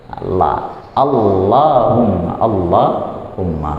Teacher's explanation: Nah, di situ yang di bagian tebalkan ketika kita keluarin huruf lam dari gusi atas itu kita tebalkan la.